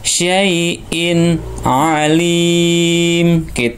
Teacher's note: Bedakan antara hamzah, suara hamzah seperti alif ya, dengan suara ain. Ain di tengah tenggorokan. Kalau ini di pangkal tenggorokan, ini di tengah tenggorokan.